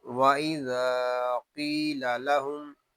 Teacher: اس میں ذال کو ہم ایک الف تک کھینچ کر پڑھیں گے کیونکہ یہاں الف مدہ ہو رہا ہے۔